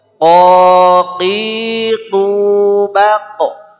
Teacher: Adapun qaf keluar pangkal lidah dengan langit-langit lunak saja. Artinya lebih belakang sedikit dari huruf kaf.